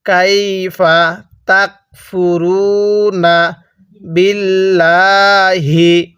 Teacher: এই জায়গার মধ্যে কিন্তু আল্লাহ শব্দের লামটাকে চিকন করে পড়তে হবে